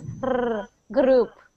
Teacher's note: So the biggest thing for you is to try to stop rolling your R's.